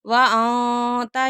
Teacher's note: اخفاء ہو رہا ہے، نون ساکن کے بعد تا ہے